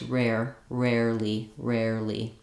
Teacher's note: the tongue is lifting in the back then I drop that tight tongue and just lift the front of my tongue for the Lee